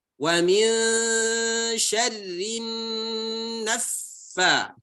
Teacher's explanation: gunnah musyaddadah, ya, itu ditahan. Ya, gunnah ditahan.